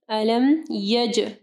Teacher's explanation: جیم کے اوپر جو ہے کلکلہ کرنا ہے، جیم ساکن ہے۔ یجعل، عین کو واضح پڑھنا ہے۔